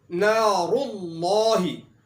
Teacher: نار اللہ کے اندر را کے اوپر پیش ہے، اس لیے یہاں پر را کو موٹا پڑھا جائے گا